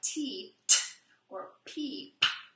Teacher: I can't really elongate the p because it's just a popper. We can't really say it long because it'll just turn into pa, which is actually two sounds.